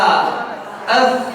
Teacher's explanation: Oh, ujung lidah ketemu ujung gigi seri atas. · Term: Tha